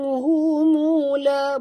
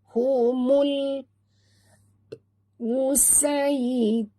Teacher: Mul alif lam qamariyah, jangan lantun. Jangan baca humula, bukan humula, tapi humul musaytirun.